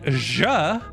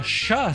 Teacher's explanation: ja is exactly the same as sh, except your vocal cords vibrate.